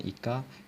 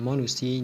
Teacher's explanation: Seterusnya, vokal depan sempit I.